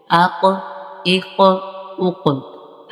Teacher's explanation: جو قوف نقطوں والا ہے یہ حروف قلقلہ میں سے ہے، تو اس پہ ہم نے قلقلہ کرنا ہے